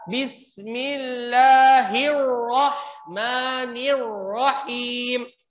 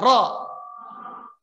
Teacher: Ro bahasa Arab itu harus ada getarannya.